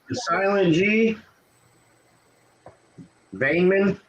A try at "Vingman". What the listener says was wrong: No, you say the G. Ving. Vingman.